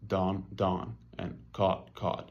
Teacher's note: they're completely merged into one low back vowel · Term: caught caught merger, caught merger